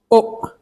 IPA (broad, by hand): ʊ